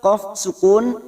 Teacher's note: qaf sukun qalqala sugro karena mati asli di tengah kalimat, jangan lupa dipantulkan.